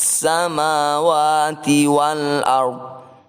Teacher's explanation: huruf dhad berada di akhir bacaan tetap dibaca namun tanpa bersuara